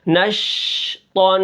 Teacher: نون کے اوپر زبر ہے، شین کے اوپر جزم ہے. شین کی جو آواز ہے اس کے اندر ایک ایسی صفت پائی جاتی ہے جس کو تفشی کہتے ہیں، یعنی جب ہم شین کو ادا کرتے ہیں تو منہ کے اندر آواز پھیل جاتی ہے